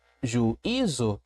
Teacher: Essas duas vogais foram separadas quando a gente pronuncia e quando nós fazemos a separação silábica. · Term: hiato